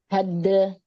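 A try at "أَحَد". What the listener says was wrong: Nah, jadi bukan ahade, ahade. Kalau ahade berarti dal kasih e ya. Nah, itu jangan. Syiddah dulu di makhraj dal, baru qalqalah. Ahade, hadde, tapi cepat ya. Ahade.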